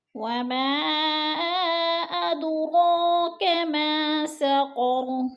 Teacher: وما پہ مد منفصل ہے، حروف مدہ کے بعد حمزہ دوسرے کلمے میں ہے، مد منفصل 4 الفی مد ہے، 4 حرکات کے برابر ہم نے اس کو کھینچ کر پڑھنا ہے۔ اد پہ قلقلہ ہو رہا ہے، دال ساکن ہے اور دال حروف قلقلہ میں سے ہے تو اس کو ہلا کر پڑھیں گے یعنی لمبا کر کے کھینچ کر پڑھیں گے۔